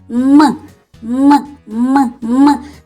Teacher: це приголосний тому що не співає вимовляється твердо